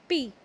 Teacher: We speak p with the help of both the lips.